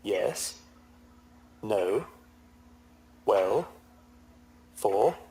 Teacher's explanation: when people want to say something in a questioning manner, they may say it with a rising tone